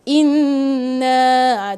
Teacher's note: Dengung kan sepatutnya 2 harakat.